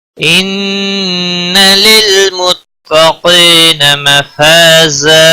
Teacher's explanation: ان نون مشدد پر گنہ ہوگا